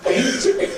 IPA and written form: peɪnt (paint)